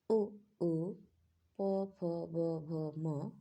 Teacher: होठों के द्वारा उ ओ प फ ब भ म यानी प वर्ग का उच्चारण होता है